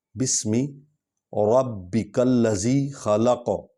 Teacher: ربی با پر شد ہے، اس پر زور دیں گے۔ کاف کو لام کے ساتھ ملائیں گے۔